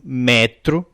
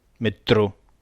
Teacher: Em Portugal, apanham o metro, grave, mas no Brasil essa palavra é aguda.